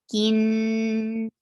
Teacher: Whenever you find noon with tashdid, you are giving it 2 haraka long gunna.